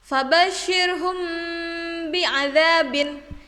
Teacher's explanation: Jadi huruf mim sukun nya itu disuarakan seperti samar-samar di bibir dan juga sedikit didengungkan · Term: Ikhfa Syafawi